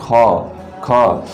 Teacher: अधिक वायु लगती है, चूंकि निकलती है, जैसे ख ख। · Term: महाप्राण